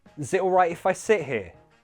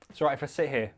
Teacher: if you're speaking fast, is it kind of squeezes together to sound like zit.